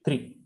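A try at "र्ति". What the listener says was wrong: Rti. It is not even 3. It is Rti. The Refa is before the Takara. Rti. 3 will be when the Refa is after the Takara.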